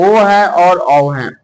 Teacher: ओ और औ कहां से निकलते हैं, तो कंठोष्ठ से, यानी कि कंठ प्लस ओष्ठ, यानी कि कंठ से भी कुछ कुछ आवाज निकलेगा और ओष्ठ से भी